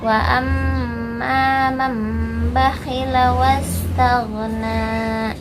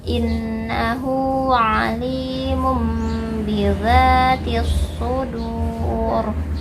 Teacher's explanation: Jadi ketika ada nun sukun atau tanwin bertemu dengan huruf ba, maka bunyi nun sukun atau tanwinnya berubah menjadi mim.